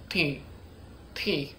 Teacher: I also put a little more, like, air in the T